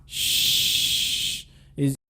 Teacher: Oh, there isn't a vibration, so it's a voiceless sound.